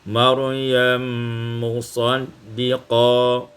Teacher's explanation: idghamul mim fil mim, diidghamkan mim pada mim maka menjadi Maryam musaddiqa